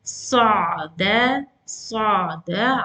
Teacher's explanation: Sad is heavy, dal is light, and ayn is moderate.